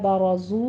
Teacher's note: زو میں زائ کی آواز سیٹی کی نکالتے ہوئے اوپر ضمہ ہے، اور دونوں ہونٹوں کو گول کر لیجئے، واو مدہ آ رہا ہے، 2 کاؤنٹ کرنے ہیں۔